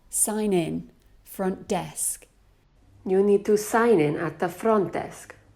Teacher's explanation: Here, I incorrectly stress sign and front. The natural way to stress these phrases is to stress in and desk.